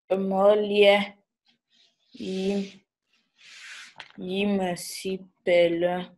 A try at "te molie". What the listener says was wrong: Regarde, il y a les coups de glotte que tu ne mets pas. Te molie. Si tu dis lié, ce n'est pas lié. Quand tu vois l'apostrophe aussi, c'est le coup de glotte.